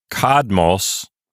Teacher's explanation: only has two syllables and the accent is on the first syllable · And the reason for that is the placement of the accent in the previous word. The previous word, kadmos, only has 2 syllables, and the accent is on the first syllable, so it's pronounced kadmos, and so together, kadmos and a me form a single syllable counting unit.